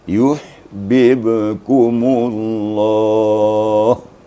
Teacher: Karena dia makhrajnya sama, hurufnya sama, maka kalau tidak hati-hati dia akan terbawa lalu yang ba yang terakhir. Jadi bib 2 kali bibirnya dibuka, ya.